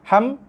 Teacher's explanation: Step yang kedua dengung, dengung bibir kacip, dengung pada bunyi kat dengung rongga hidung. Dengung di hidung tapi berserta dengan kacipan, tekanan pada dua bibir.